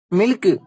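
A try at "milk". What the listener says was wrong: டேய் அதை ஏன்டா சில்க் மாதிரி சொல்ற? கே நல்லா மென்மையா சொல்லணும். மில்க்.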